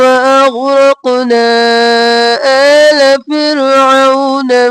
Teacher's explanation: وَأَغْرَقْنَا آلَ فِرْعَوْنَ، آلَ نہیں کرنا، آ اور لا، آ کو کھینچنا ہے، لا کو جلدی سے